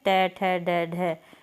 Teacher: ट वर्ग होता है मूर्धन्य ध्वनियों का होता है। ट, ठ, ड, ढ, इसमें मूर्धा को टच करती है हमारी जीभ।